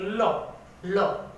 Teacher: पार्श्विक ध्वनि, ल को बोली, जब अपन ल को बोलते हैं तो ध्वनि है वो जीभ के दोनों पार्श्व, दोनों साइड से हवा बाहर निकलती है। लो, लो, जीभ ऊपर टकरा के आगे हुआ भाग, दोनों भाग खुले हो गए, हवा दोनों तरफ से निकली, यानी कि पार्श्विक ध्वनि हमारी कौन सी होगी?